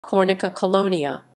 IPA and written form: kɔrˈnit͡sa kɔˈlɔɲa (Kornica Kolonia)